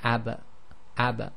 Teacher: together when you say AB you'll get AB but you can't you have to release in order to complete the sound and that's the echo